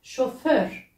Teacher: Chauffeur, avec un R roulé à la fin. Chauffeur. Assistant, c'est asistan.